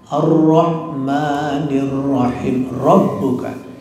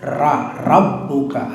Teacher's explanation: Jadi ini namanya roh tafkhim tebal.